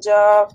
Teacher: জিহ্বার অগ্রভাগ সামনের উপরের দুই দাঁতের অগ্রভাগের সাথে যুক্ত করে টাচ করে নরম করে হালকা করে উচ্চারণ করতে হবে